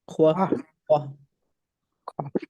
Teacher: Q is more at the back of your throat.